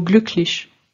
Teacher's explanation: le U antérieur devient presque un mélange entre un U et un e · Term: voyelles postérieurs